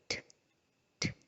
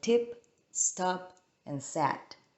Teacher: The voiceless sound is t, t, which is the sound in tip, stop, and sat. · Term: alveolar stops